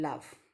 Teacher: the air will escape along the sides of the tongue without any friction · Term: laterals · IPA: /l/